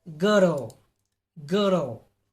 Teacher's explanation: the tongue is in the center of the mouth it is in its neutral or its rest position the body of the tongue is in the middle of the